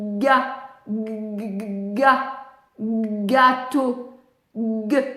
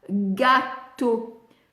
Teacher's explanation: Pourquoi? Parce qu'il n'entend pas la vibration laryngée du g